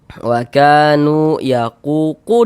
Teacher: Sehingganya huruf yang memiliki harokat dhammah nih, yang memiliki tanda baca dhammah nih kita baca panjang. Sehingganya ku dibaca panjang. Mad tabi'i panjang 2 harokat.